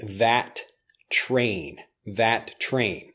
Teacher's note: when we pronounce them together we say them together that train that train it actually becomes one blended sound as opposed to two different words